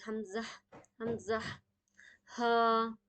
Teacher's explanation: तो हमजा और हा की अदायगी हलक के सबसे आखरी हिस्से से होती है। और इसे पढ़ते वक्त आप जब टच करेंगे तो वाइब्रेशन ज्यादा होगी।